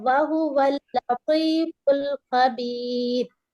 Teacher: لام پر تشدید ہے تو ہمیں ڈبل آواز آتی ہے